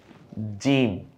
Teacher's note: জিম জিহ্বার মাঝখানে ওই বরাবর তালু